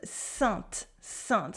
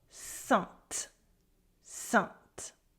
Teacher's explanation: We have a consonant after A-I-N, so we have the nasal sound. There is no E, there is no N, there is no I, it's just the nasal un.